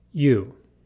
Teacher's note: my lips become rounded and protrude forward significantly. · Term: lip rounding